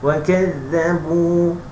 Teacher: jumpa huruf zal mesti nipis hujung lidah. Tengok lidah saya tak handsome Jangan ikut muka saya, lidah saya, mulut saya hujung lidah.